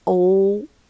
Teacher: As you see, it's a long vowel, mid open, mid close, and it's back